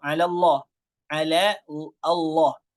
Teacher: Nah, ini pertemuan dua lam. Lam yang pertama 'ala ini tipis. Allah lam yang kedua ditebalkan.